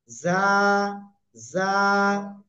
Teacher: জিহ্বার আগা, সামনের নিচের এই দুই দাঁতের পেট ও আগার সাথে লাগাবেন, লাগিয়ে নরম করে উচ্চারণ করবেন, আর এক লিপ টেনে পড়বেন।